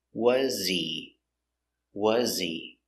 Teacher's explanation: Was he. He is not stressed, so the H is silent.